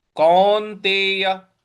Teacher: क पर औ की मात्रा है और न पर हमको आघात देना है